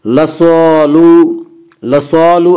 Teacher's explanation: لصالو، لصالو الف مدہ، الف ہمیشہ مدہ ہوتا ہے، الف سے پہلے ہمیشہ زبر ہوتا ہے، الف مدہ کو ایک الف کے برابر کھینچ کر پڑھیں گے